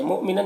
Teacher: حمزہ ساکنہ جھٹکا لگے گا اور نن کی تنوین میں اظہار ہو رہا ہے سے جلد پڑھنا ہے.